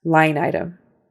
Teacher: the word line is emphasized more than item. Line has the stress.